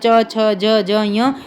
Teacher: जब इनको हम बोलते हैं ना तो हमारी जीभ क्या है? किसी विशेष स्थान से स्पर्श करके और घर्षण के साथ बाहर निकलती है। · जो जीभ है ना किसी जगह पहले स्पर्श करेगी और फिर क्या है? घर्षण के साथ आवाज बाहर निकालेगी। ठीक है? इसलिए इनको स्पर्श संघर्षी बोलते हैं।